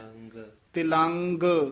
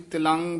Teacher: ਦੀ ਸਿਹਾਰੀ ਦੇ ਨਾਲ ਤੇ ਗਗ ਵੀ ਬੋਲਣਾ ਹੈ ਤਲੰਗ ਤਿਲੰਗ ਕਈ ਵਾਰ ਅਸੀਂ ਤਿਲੰ ਬੋਲ ਜਾਂਦੇ ਹਾਂ ਗਗਾ ਰਹਿ ਜਾਂਦਾ